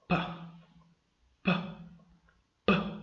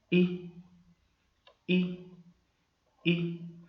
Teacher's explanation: While pronouncing the two sounds, you probably noticed that when you pronounced the first sound, that is pa, the sound came out by force. It was as if the air stream was blocked, and then the sound had to come out by force its way out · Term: consonant sounds